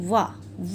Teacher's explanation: वकारस्य दंतोष्ठम, यानी कि वकार यानी कि वा का उच्चारण हमारे दांत और होंठ का प्रयोग करके होता है।